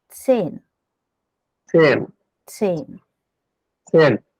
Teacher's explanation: Z is pronounced as TS, combiningly TS.